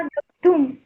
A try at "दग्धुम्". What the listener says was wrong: हाँ, दग्धुम।